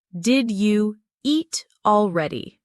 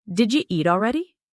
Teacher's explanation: Did you becomes did ya.